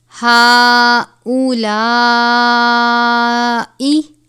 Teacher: ہؤلائی کھڑی حرکات حروف مدہ کے قائم مقام ہے. بڑی مد ہے، 5 الف کے برابر اس کی مقدار ہے